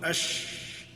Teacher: زبان کا جو درمیان والا حصہ ہے اس کے ساتھ لگائیں گے تو شین ادا ہوگی